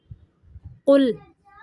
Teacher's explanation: قوف کو موٹا پڑھنا ہے، لام کو باریک پڑھنا ہے